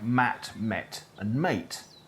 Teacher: Most North Americans make a distinction between /æ/ /ɛ/ and /eɪ/ in mat, met and mate. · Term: merger